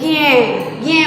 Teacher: ज का भी उपयोग हो रहा है और नाक से भी नासिका का भी प्रयोग है